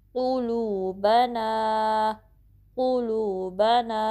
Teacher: क़ुलूबना, क़ुलू, क़ाफ जो है वो आपने हैवी वे में पढ़ना है, पुर पढ़ना है। जो ज़ुबान का बहुत जो बैक पोर्शन है, अक्सर लिसान, वो ऊपर के नरम तालू से टच करेगा · तो इसको आपने ठीक से पढ़ना है और होंठों को गोल करना है प्रॉपरली, ठीक है। लू को 2 काउंट स्ट्रेच करना है क्योंकि बाद में वाव मद्दा आई है। ब ना को 2 काउंट स्ट्रेच करना है।